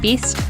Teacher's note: the tongue is getting even higher for some people when they say the new zealand dress vowel and this means for example that best sounds more like beast